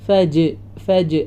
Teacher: മലഫജർ ജീമിന് സുക്കൂൻ വന്നതുകൊണ്ട് ഇവിടെ വീണ്ടും കൽക്കല വന്നിട്ടുണ്ട് അതും മറക്കരുത് ഫജ് ഫജ് ആ സൗണ്ട് വരണം മുഴപ്പിച്ചുകൊണ്ട്തന്നെ പറയാം ഫജർ നിർത്തുമ്പോൾ റ ഹെവിയാക്കികൊണ്ട്തന്നെ